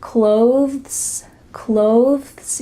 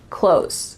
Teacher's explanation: When native speakers are speaking a little bit slower, they might add a TH sound, clothes, clothes. You see how my tongue comes out a little bit for that TH? Clothes. But really, when we're speaking quickly, it just sounds like close, close.